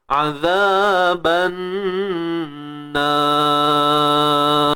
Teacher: Apapun untuk ra ni, pastikan kita berhenti dengan tebal.